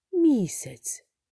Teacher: наголос падає на перший склад місяць а другий склад є ненаголошеним